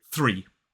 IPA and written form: θriː (three)